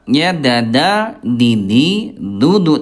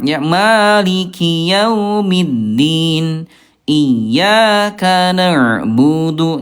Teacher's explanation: huruf dal dari segi udara dia sifat hurufnya jahr. Ayah bunda tidak keluar udara.